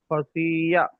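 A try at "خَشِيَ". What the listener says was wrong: শি টান হয়ে যাচ্ছে, সবগুলো হারাকাতে আছে, কোনোটা টান হবে না। হারাকাতের পড়াকে তাড়াতাড়ি পড়তে হবে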